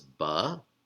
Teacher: this is a vocal schwa because it appears at the beginning of a word